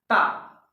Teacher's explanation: अब इस समय देख रहे हैं जो ता वर्ग है, उस समय जीवा ता को बोलते समय जो जीवा है वह दांत दोनों ऊपर और नीचे के दांतों से टच हो रहे हैं दोस्तों। इसीलिए इसी आधार पर हम कह सकते हैं कि जो ता है वह कहां से निकल रहा है, दंत से निकल रहा है दोस्तों, या दंत मूल से निकल रहा, आप कह सकते हैं।